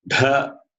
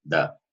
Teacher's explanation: Dha is Mahaprana, Da is Alpa Prana.